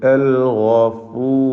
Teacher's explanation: പദത്തിൻ്റെ അന്ത്യത്തിലെ റായിന് തഫ്ഖീം കൊടുക്കുക. റായിന് സുക്കൂനാണ്.